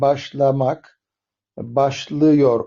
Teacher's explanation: A'dan ı'ya geçiş Yani bir daralma var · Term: ünlü daralması